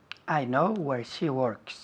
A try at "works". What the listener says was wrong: Works. Work. Con la R un poco más fuerte. Work. Work.